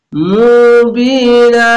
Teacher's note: জের পাশে ইয়া সাকিন এক আলিফ টেনে পড়বেন।